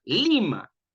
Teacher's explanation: Lima es una palabra graviollana cuya sílaba tónica, es decir, la que lleva la mayor fuerza de voz, es la sílaba li.